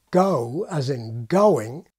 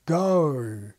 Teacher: the glide is not so much up and back as up and forward. At the same time, as in W, the lips become somewhat rounded. In other words, it's more like the glide French has at the start of its number 8, 8. · For many Australians, in what we can call the General Australian accent type, the glide is not so much up and back as up and forward. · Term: forward glide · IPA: gʌɥ